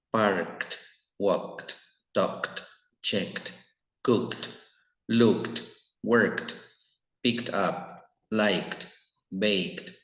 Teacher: casi todo lo que termine en una K una K se pronuncia como t